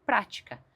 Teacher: A palavra prática tem um acento que deixa bem claro que eu preciso enfatizar, ou seja, colocar mais força na primeira sílaba